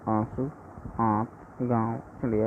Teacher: अनुनासिक के उच्चारण में नाक से बहुत कम सांस निकलती है और मुख से अधिक